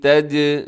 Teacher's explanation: جیم کو ہلانا ہے کیونکہ جیم حروف قلقلہ میں ہے۔